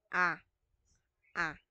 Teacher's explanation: so nasa baba ang dila, pero nasa gitna.